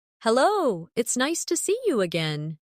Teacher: see you often sounds like see ya in fast speech.